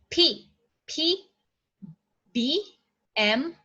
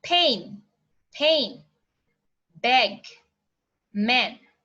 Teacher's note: So our lips, our upper lips and lower lips are closing together. So that is the bilabial.